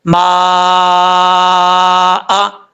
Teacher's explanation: یہاں پہ مد متصل ہے، 5 الف کے برابر اس کو لمبا کریں گے، اور یہاں پہ جب وقف کریں گے تو حمزہ کو ساکن کر دیں گے، ما، اس طریقے سے۔